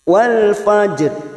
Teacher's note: huruf jim sukun yang mempunyai sifat qalqalah sugro karena mati di tengah-tengah kalimat. Kita pantulkan · Itu pada huruf fa, di sini ada fathah, maka ini namanya ra tafkhim, ra yang dibaca tafkhim atau tebal